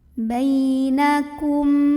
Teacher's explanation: Hai ikan bainakum Kum di sini ada izhar syafawi karena ada mim sukun yang ketemu sama huruf Kaf maka mim sukun nya ini dibaca dengan jelas